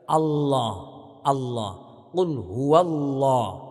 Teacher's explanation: Allahnya kita baca dengan tafkhim, dengan tebal.